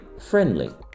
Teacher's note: Le d de friendly disparaît de même pour donner friendly. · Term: élision